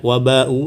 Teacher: Jadi bacaannya adalah bacaan panjang ya, di sini disebut mad wajib muttasil.